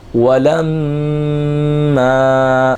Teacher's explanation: لام میم زبر لم کے اندر میم جو ہے وہ مشدد ہے، اس کے اندر میم الف زبر ما الف مدہ بھی ہو رہا ہے. میم مشدد کے غنے کو بھی کھینچنا ہے اور الف مدہ کو بھی ایک الف کے برابر کھینچ کر پڑھنا ہے